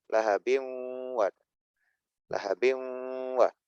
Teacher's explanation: Jadi dibaca dengan memasukkan huruf atau memasukkan tanwin ke huruf wawu nempel maksudnya, dan dibaca dengung ditahan sedikit lama.